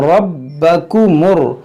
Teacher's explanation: रा को पुर पढ़ेंगे, यहाँ पर देखेंगे रा को मोटा करेंगे, बा को खूब जमाव के साथ